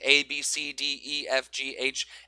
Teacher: It's all kind of the same time, same strength, same duration, same pitch.